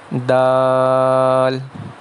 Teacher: دال دال دال کا جو مخرج ہے وہ تا والا ہی ہے، یعنی زبان کی نوک جب سامنے والے دانتوں کی جڑ سے لگے، اس سے جس طرح تا ادا ہوتا ہے ایسے ہی دال ادا ہوتا ہے۔ دال۔